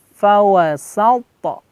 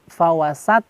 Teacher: Fawasata, ada pantulan di huruf qalqalah to ya. Jadi jangan sampai bunyinya menjadi fawasat.